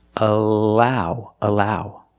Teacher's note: you see the L here the Double L is between vowels when you have an L or a Double L between vowels that's a light L